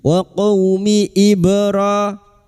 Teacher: Waquumi ibra ba sukun huruf ba yang mati asli di tengah kalimat qalqalah sugro. Jangan lupa dipantulkan.